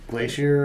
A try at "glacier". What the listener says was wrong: Glacier. Glacier. Glacier. Why do Why do you enunciate the I so hard? Glacier.